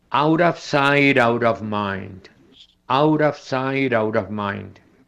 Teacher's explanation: Habíamos mencionado antes que la T entre vocales se pronuncia como una R española, pero resulta que esa T, cuando está en dos palabras seguidas, también se pronuncia como R española. Entonces, aquí vemos tres T seguidas.